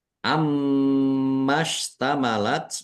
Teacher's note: mim tasdid dibaca gunnah atau mendengung, ditahan biar tampak mendengung